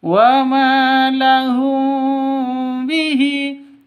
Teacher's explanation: mim mati bertemu dengan ba samar didengungkan ya karena bacaan ikhfa s ikhfa syafawi. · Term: Ikhfa syafawi dengung